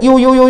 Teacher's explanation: 이로 시작했다가 오로 끝나는 소리거든요. 요가. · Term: 이중모음